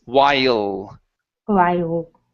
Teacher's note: Give me an L at the end instead of wow with an oo.